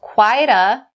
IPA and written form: kwaɪ-də (quite a)